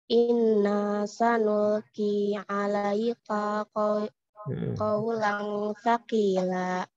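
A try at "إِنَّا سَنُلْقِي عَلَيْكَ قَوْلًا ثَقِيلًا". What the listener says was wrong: K-nya satu ketukan aja. Alaika kau. Alaika kau.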